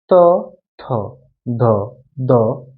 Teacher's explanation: এরপরে যদি তুমি চিন্তা করো পরের যে ধনী তর্কের ধ্বনির সাথে আসো ত থ দন্তন প্রত্যেকটা উচ্চারণ করতে গেলে তোমার কি লাগতেছে বলতো জিহ্বা দাঁতে লাগতেছে এইজন্য এটাকে আমরা বলে থাকি হচ্ছে দন্ত ধ্বনি